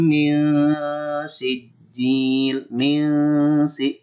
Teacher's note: tahan dulu nunnya ya. Disamarkan bertemu dengan sin. Itu namanya ikhfa hakiki.